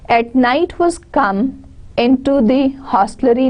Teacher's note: at, this is unstressed here, night is stressed because it is the noun. Was come, now was and come again, the stressed syllable.